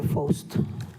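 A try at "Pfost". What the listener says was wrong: The F is silent in my name, so it's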